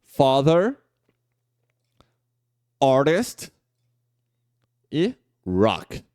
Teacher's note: você abre a boca mais verticalmente um pouquinho assim ó ela fica um pouco mais relaxada Ela não fica não fica arredondado dos lábios